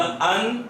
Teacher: तो जबान की नोक ऊपर वाले दांतों के मसोड़ों को लगेगी। मसोड़ों से पीछे तालू का स्टार्ट होता है।